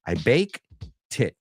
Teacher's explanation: Okay, muchos quieren añadir baked it, right? So baked, so primero es bake y luego la T, que normalmente iría con esa ED ahí, se une al it.